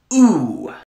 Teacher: if we go to a high back vowel we get ooh